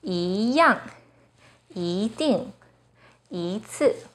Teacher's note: When 一 is followed by a fourth tone, it changes to the second tone, 一样, 一定, 一次.